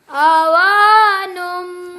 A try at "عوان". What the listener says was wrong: आइन सही निकालो ना। अब वक़फ़ करना है ना तो काफ की ज़बर नहीं पढ़नी। इसको जी आइन से निकालो ना।